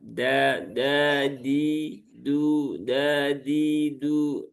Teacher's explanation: huruf dal ini dia tidak punya sifat hamas. Dia punyanya sifat jahar.